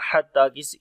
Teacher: کریں گے، ہا گلے کے درمیان والے حصے سے آئے گا، تا کو لمبا کریں گے، کھڑی زبر ہے